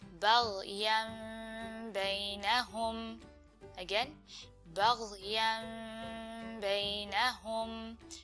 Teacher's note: you don't close your lips completely, you leave a little bit of a gap, so to help with that ghunna sound